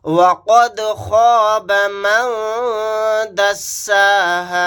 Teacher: دال ساکن ہے، یہاں پر قلقلہ کریں گے